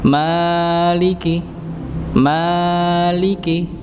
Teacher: ya ini untuk huruf mim yaitu 2 harokat panjangnya jangan tahu lebih Nggih dan jangan pendek untuk ini Nggih untuk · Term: memanjangkan huruf mim